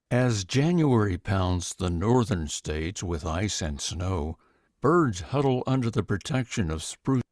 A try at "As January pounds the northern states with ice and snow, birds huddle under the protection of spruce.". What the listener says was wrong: There's that glottal stop again. Little too slow. I love the fact that he didn't rush the first word, but it was actually too slow on that first word, as was just extended a bit long.